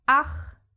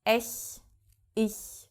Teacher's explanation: after the A, guttural CH, after E and I, a very, let's call it a soft CH